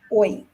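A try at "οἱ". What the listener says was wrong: Hoi. It's got a rough.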